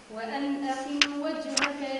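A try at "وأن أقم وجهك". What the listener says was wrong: قلق للجيم، ما تقوليش وجهك، هذه جدي صفه الشده والقلق لا ما ثماش. لا، وان اقيم وجه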